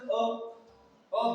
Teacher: जीभ के मध्य भाग से सिर्फ एक ही मध्य स्वर अ बीच में, जीभ के बीच में निकल रहा है, मध्य स्वर एक ही है।